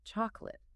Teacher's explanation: The O and the A are entirely reduced.